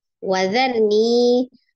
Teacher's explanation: ada ro sukun sebelumnya fathah di huruf dzal ya. Maka ro-nya dibaca dengan tebal ya. Wadharni, ro-nya tebal.